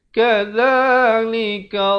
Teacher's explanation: zal di hujung lidah